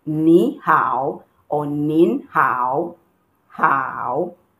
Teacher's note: it goes down and goes up again